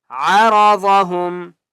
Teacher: را کو بھی موٹا کریں گے اور ضاد کو بھی موٹا کر کے پڑھیں گے